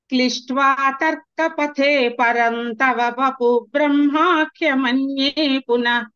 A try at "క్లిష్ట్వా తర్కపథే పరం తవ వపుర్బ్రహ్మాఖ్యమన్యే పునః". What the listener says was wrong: అక్కడ వపుర్ బ్రహ్మ అనాలి. వపుర్ అర్ర అని వినిపించే తర్వాత బ్రహ్మ.